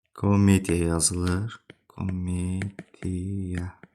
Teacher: Vurğu qəbul etmirsə, a kimi, a səsi kimi tələffüz olunur.